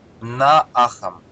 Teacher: То есть краткая А или долгая А, плюс краткая А или долгая А. Дает всегда А долгую.